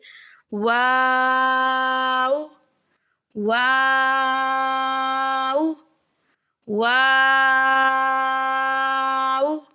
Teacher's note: واو کی ادائیگی میں ہونٹوں کو گول کرتے ہوئے اوپر کی جانب سے گول کریں اور درمیان میں مد بھی کرنی ہے